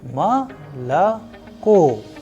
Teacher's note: I am pronouncing as if the word malako has two A and at the end it has O. Malako. It is because the stress or the udarenie is falling onto the last O, and that is why the first two O sounds like A.